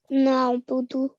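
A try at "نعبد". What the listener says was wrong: Very good. Well done. Excellent.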